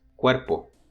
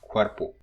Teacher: Cuerpo is to be seen as a diphthong, but it's a rising diphthong. It starts with a glide and it rises to the head of the diphthong